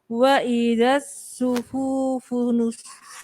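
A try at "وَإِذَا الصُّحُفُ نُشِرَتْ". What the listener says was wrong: Hanya pendek. Suhufu nusyirat. Cepat.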